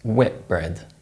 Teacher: T is replaced by P, and N is replaced by M when they're followed by B, P, or M.